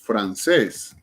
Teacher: francés, lleva el acento en la última sílaba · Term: palabras agudas